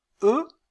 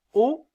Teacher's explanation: Si je dis e, je sens que ma langue est un peu plus en avant. Quand je dis o, elle est un peu plus en arrière.